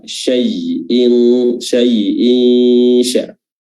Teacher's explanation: Dan kulli syai', di sini ada huruf shin yang makhrajnya adalah tengah lidah diangkat